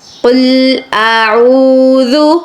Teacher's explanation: یہاں پر واو مدہ آ رہی ہے تو اس لیے آپ نے عین کو ایک الف کے برابر کھینچ لینا ہے